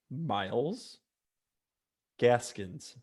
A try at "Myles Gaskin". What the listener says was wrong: Gaskin. There's no S at the end.